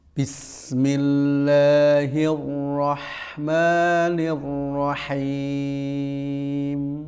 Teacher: mim itu memiliki sifat tawassut, yaitu mengalirkan suara sedikit